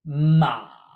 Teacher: exact same as mother but with a dipping tone